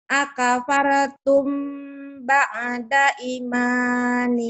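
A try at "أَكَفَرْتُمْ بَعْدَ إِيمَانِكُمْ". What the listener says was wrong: I-nya panjang. Ba'da imanikum. I-nya panjang. Akafartum ba'da iman. Ya, ba'da. Ba'da imanikum. Akafartum ba'da imanikum.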